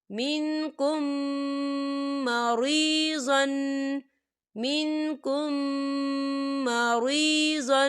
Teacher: ہم پچھلے میم کو اگلے میم کے اندر مدغم کریں گے اور ہم اسے غنّے کے ساتھ پڑھیں گے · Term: ادغام شفوی